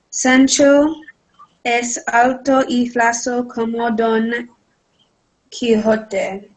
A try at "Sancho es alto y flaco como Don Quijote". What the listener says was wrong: So you need to change your intonation, right? You started a question. Sancho es alto y flaco como Don Quixote.